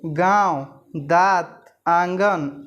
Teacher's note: ऐसे स्वरों का उच्चारण नाक और मुंह से होता है तथा उच्चारण में लघुता रहती है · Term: अननुनासिक